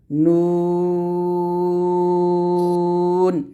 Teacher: নুন যখন উচ্চারণ করবেন জিহিব্বার আগা তার বরাবর উপরে তালুর সঙ্গে লাগিয়ে নুনটা উচ্চারণ করবেন